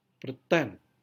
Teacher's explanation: Pada tipe kedua, silabel pertama tidak mendapatkan stres, tetapi silabel kedua mendapatkan primary stress. Berarti silabel kedua mengalami penekanan lebih kuat.